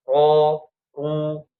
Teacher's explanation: Jadi kalau mengucapkan ro fathah dan ro dah domah harus ditegangkan lidahnya. Ujung lidahnya menyentuh gusi kemudian lidahnya ditegangkan nanti akan naik ya